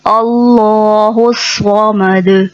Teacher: اللہ الصمد، اللہ کے لام سے پہلے زبر ہے اس لیے اللہ کا نام موٹا پڑھا جائے گا پر اللہ۔ اللہ نہیں، اللہ باریک ہو جائے گا، اس کو ہمیں موٹا کرنا ہے اللہ الصمد۔ · اللہ نہیں، اللہ باریک ہو جائے گا، اس کو ہمیں موٹا کرنا ہے اللہ الصمد۔ صاد موٹے حرفوں میں سے ہے، اس کو موٹا نکالنا ہے، سین نہیں پڑھنا۔ عموماً جو غلطی ہوتی ہے وہ صاد کو سین کی ادائیگی کی طرح پڑھ دیا جاتا ہے، جیسے اللہ الصمد، غلط، اس کو پڑھتے ہیں اللہ الصمد۔